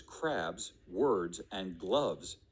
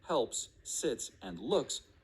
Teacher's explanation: may have noticed that in the words crabs words and gloves your throat vibrated as you said the final sound and the sound right before it this means those sounds are voiced